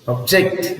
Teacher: when you say object, see the stress is on the second syllable